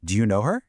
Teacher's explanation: for a question where we want a yes or no answer, the pitch actually rises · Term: voice goes up